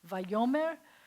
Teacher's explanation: If I add the v, but I change it from an vowel to an a vowel, and I change the accent to move to the front of the word